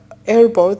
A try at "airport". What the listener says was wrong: Now notice when you're saying airport. So the P sound you're not pronouncing with enough air. It's airport, airport, airport.